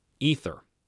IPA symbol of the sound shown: θ